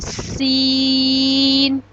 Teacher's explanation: سین کو جب ہم ادا کریں گے تو سیٹی کی آواز آئے گی